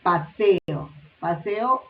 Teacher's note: Paseo, aquí vemos dos vocales consecutivas, la E y la O, pero están pronunciadas en sílabas diferentes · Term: hiato